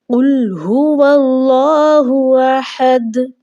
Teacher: اللہ کے نام سے پہلے چونکہ زبر آ چکی ہے، اللہ کا نام موٹا یعنی کہ پر پڑھا جائے گا۔